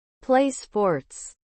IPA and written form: pleɪ spɔːts (Play sports)